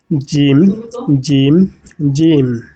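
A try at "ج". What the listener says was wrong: জিমটাকে আরেকটু টেনে করতে হবে। জিম, জিম, জিম।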